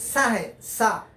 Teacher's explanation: سیٹی کی جیسی آواز آتی ہے، اس کی تلفظ کی صفت ہے۔ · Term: سین